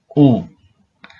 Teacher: Dia itu pengucapannya tinggi, namun dia ada di belakang